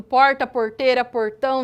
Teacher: com esse sotaque lindo do meu R retroflexo do porta Porteira portão de São José do Rio Preto interior